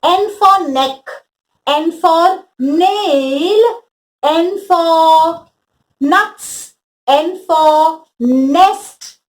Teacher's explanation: the sound of n would be get him or her to take her forefinger close one nostril and say n has got a nasal sound